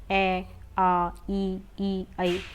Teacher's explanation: हमारा होठ की जो शेप होगी वो गोल नहीं जाएगी, बल्कि हमारे लिप्स पीछे की ओर खींचेंगे